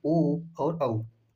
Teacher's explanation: ओ और औ का उच्चारण स्थान कंठ ओष्ठ है। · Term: कंठोष्ठ